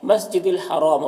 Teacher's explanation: را کے اوپر زبر ہے، را کو پر پڑھیں گے، اور یہاں پر وقف کریں گے تو میم کا زیر سکون سے بدل جائے گا، تو پھر مد عارض وقفی ہوگا، تو اس طرح سے پڑھیں گے۔